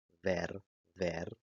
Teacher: pronuncian la labiodental sonora en palabras con la B corta